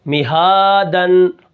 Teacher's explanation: اب میم کو نہیں کھینچنا اور ہا کو کھینچ کر پڑھنا ہے کیونکہ اس کے اوپر کھڑا زبر ہے